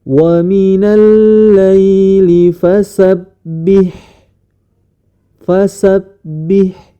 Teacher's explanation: huruf ha tersebut di pangkal tenggorokan bersamaan dengan huruf hamzah atau Alif